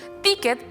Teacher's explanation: ticket por el contrario está en la penúltima sílaba